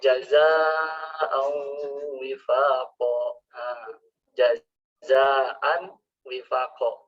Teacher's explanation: Idgham bigunah artinya harus huruf waw itu harus masuk ke rongga hidung. · Jadi unsur nunnya itu tetap tidak hilang